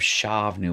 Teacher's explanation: that's a silent schwa because it is closing a short syllable